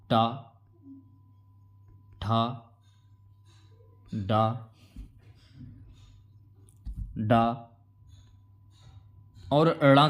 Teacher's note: तो ट वर्ग में जो है ना यह मूर्धन्य व्यंजन हैं।